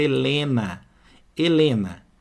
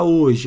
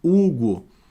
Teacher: Olha a palavra Helena Helena eu tenho seis letras Mas ó esse H aqui não tem som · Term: H mudo